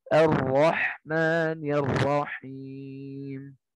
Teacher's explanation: jadi ro ketika bertasydid itu malah suruh disembunyikan takrirnya. · getarannya itu ya tidak terlalu nampak sebagaimana huruf R pada Indonesia gitu ya